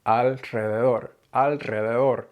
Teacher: The word alrededor sticks with me because it was a really long while before I could say it, and I had to say alrededor and really force air out of my mouth after the L. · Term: rolled R sound